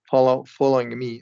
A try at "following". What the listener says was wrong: Yeah, make sure you close that long O and following.